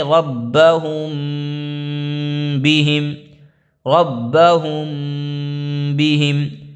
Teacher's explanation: میم ساکن کے بعد با آئے تو غنہ کے ساتھ اخفاء ہوگا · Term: اخفاء شفوی